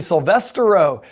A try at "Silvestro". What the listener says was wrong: You added an extra syllable there. It's Silvestro, not Silvestro.